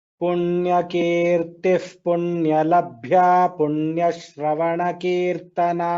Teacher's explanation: प्रथमपादौ भ्या इति अत्र भकारस्य महाप्राणः वर्तते